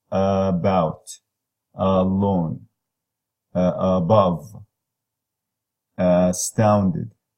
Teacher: the schwa, is a mid-central, lax, unrounded. The closest one to it is the as in mud, mud, bug.